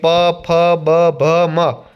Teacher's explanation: 2 હોઠ ભેગા થાય અને જે વર્ણોનો ઉચ્ચાર થાય તેને ઓષ્ઠ્ય વર્ણો કહે છે. જેમ કે પ, ફ, બ, ભ, મ.